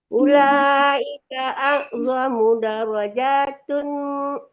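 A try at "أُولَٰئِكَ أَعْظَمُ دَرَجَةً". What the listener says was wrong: Darajatan, jangan dipanjangkan ja-nya ya.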